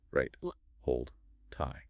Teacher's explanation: there's a slight hold, a delayed plosion, before you release the T in tie.